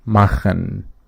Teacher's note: this en at the end of the verbs is pronounced syllabically